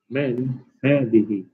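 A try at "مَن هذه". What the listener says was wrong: Now remember, men is what? With the fatha. Man, right? You're asking a question.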